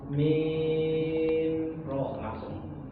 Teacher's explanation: Nah itu didengung karena terjadi mim bertemu mim.